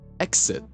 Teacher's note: exit isn't even KS it's gz